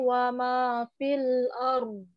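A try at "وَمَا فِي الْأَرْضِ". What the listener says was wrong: Ayo, fil arum. Fil arum. Kurang mengalir dotnya itu.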